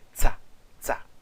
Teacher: o tzadi, que é uma sibilante enfática